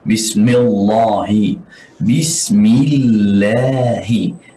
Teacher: kita tidak boleh tebalkan lam nama Allah di sini